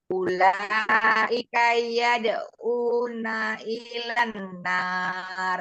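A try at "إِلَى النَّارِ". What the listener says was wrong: Ilan nar, tidak ilan. Ilan langsung.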